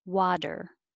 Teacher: that T changes to a D